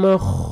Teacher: خا کو صحیح اچھی طرح ادا کرنا ہے موٹا کر کے